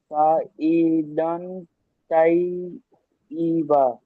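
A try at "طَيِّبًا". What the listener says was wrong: তাই নয়, ত ত সাইদান তাইয়িব। তয়্যিবা।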